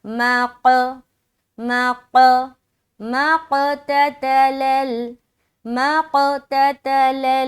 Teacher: موٹا حرف سے مراد حروف مستعلیہ کے اندر آتا ہے، استعلا کی صفت ہے، تو ظاہر بات ہے جب اس کو ہم ادا کریں گے تو موٹا موٹا معلوم ہونا چاہیے۔ تو جب ہم میم کو قاف سے ملائیں گے تو ہماری آواز گول ہوتے ہوئے جدا ہوگی۔